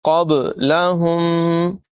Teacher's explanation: با ساکن حروف قلقلہ میں سے اس میں قلقلہ خوب ظاہر کریں گے، آواز ٹکراتی ہوئی محسوس ہوگی۔